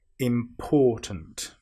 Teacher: some people will put the stress on the im, which is wrong. We need to put the stress on the or.